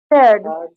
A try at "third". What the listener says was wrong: It's not feared. 3 RD. You have to say third, like a bird.